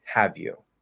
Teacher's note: So over here, have you, we hear h, a, v, right? That v and the y are sort of linking together a bit. And then ooh, have you.